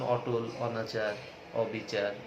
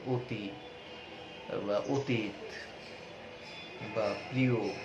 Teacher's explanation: সংবৃত উচ্চারণে অধ্বনি ও ধ্বনির মতো উচ্চারিত হয়